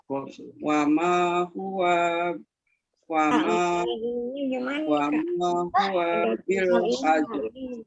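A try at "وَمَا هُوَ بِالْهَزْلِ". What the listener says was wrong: Di huwanya jangan dipanjangin Bu ya, tapi langsung. Wa ma huwa bil hazl.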